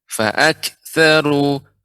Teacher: Huruf kaf sifatnya adalah adanya hamas, aliran udara. Walaupun sedikit harus diberikan aliran udaranya.